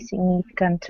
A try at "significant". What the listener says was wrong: Globally significant. You got to put it's not like gnocchi. You got the G is hard. Significant, not signe, but significant. So the GN, if it were the word SIGN, that would be sign. So in that case it would be silent. Here it's not silent. Significant.